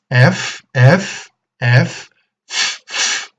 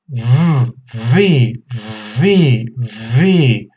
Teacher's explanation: with the same articulatory points let's use vibration in the vocal cords you can place your hand in your throat to make sure